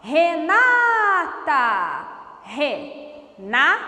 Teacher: O na é tônico, é a penúltima sílaba, então é paroxítona.